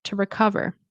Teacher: How long will it, okay, will it take to, remember, you can pronounce it as to, but generally in connected speech, we will pronounce to, like T-O, as ta. Okay, it helps with the rhythm of English.